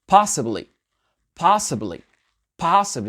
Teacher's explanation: L'accent tonique sur la première syllabe.